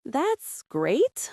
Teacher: With flat intonation sounds sarcastic or unenthusiastic.